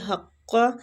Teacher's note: قاف جو ہے یہ مستعلیہ حروف ہے، اس کو پور پڑھنا ہے